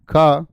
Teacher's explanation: यानी जीभ के मूल से बोले जाते हैं। जीभ के मूल से उच्चारण होता है इनका। जी्हा के मूल से उच्चारण होगा।